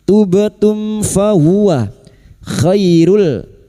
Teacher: Mim sukun bertemu fa idhar syafawi. Mim sukun dibaca jelas tanpa mendengung.